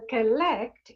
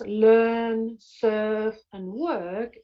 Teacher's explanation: collect uses the schwa sound whereas learn surf and work uses the er sound